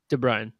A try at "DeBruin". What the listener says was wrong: DeBruin. DeBruin. That's a U, not an A. DeBruin. No, there is no A.